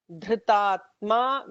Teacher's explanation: Dhritatma with a dha, with a Mahaprana dha,